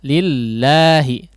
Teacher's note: huruf lam di lafzul jalalah, di sini lamnya tipis ya. Lillahi, jangan lillah tidak ditebalkan, tapi lillahi.